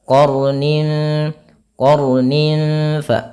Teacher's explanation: Yaitu artinya kita membacanya dengan jangan dibaca qarnin tapi dia qarnin. Nah, sifat huruf ra itu adalah sifat takrir, tapi takrirnya jangan banyak-banyak.